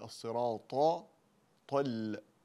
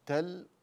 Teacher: نفخم الطاء و نرقق اللام